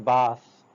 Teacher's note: Air is forced through upper teeth and tongue, dental sound. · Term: th sound